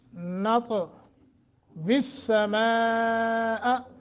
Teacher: یہ مد متصل ہے، اس کو لمبا کریں گے